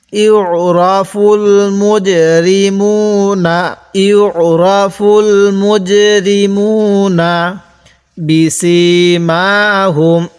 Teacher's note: আমি কিন্তু সিনের মধ্যে টান দিছি, বায়ের মধ্যে টান দেই নাই